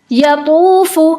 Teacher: پیش کے ساتھ بھی اس کا استعلا برقرار رہے گا